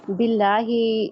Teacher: बिल्लाही इसमें जलाला का जो लाम है वो बारीक पढ़ा जाएगा, क्योंकि इससे माकबल जेर है।